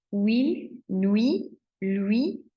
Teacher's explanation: we start with that tight lip, and then we kind of spread it into a smile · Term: semi-vowels